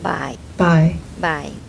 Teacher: sound like goodbye but you make it low tone